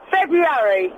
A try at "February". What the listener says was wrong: You don't say the airy, it's February.